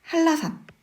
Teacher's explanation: 5번에 한라산, 솜니불 이렇게 발음을 하는데 한라산 이렇게 발음을 합니다. 이유는 뒤에 나와 있는 리을 때문에 앞에 있는 니은 받침이 리을로 바뀐 것이죠. 이것은 유음합니다.